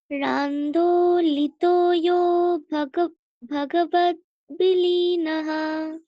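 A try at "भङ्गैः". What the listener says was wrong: ভঙ্গৈহি, ওখানে একটা বিসর্গ বলে দেবে, আর পরে আন্দোলিত বলবে। আমরা যেহেতু ভেঙে ভেঙে বলছি, তাহলে বিসর্গ এবং দুটো ভেঙেই বলবো, ঠিক আছে? ভঙ্গৈহি, ওখানে বিসর্গ বলে দিলাম, তারপর আন্দোলিত, ঠিক আছে?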